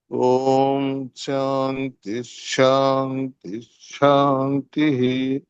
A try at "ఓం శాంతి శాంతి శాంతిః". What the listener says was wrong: ఇక్కడ ష కి మీరు ఒత్తు పలుకుతున్నారు ఒత్తు పలుకొద్దు